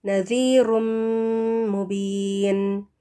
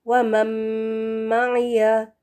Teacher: نون ساکن کے بعد میم ہے تو یہ نون میم میں مل جائے گا